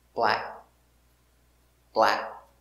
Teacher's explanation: it is a stop k we don't say black we make the position and stop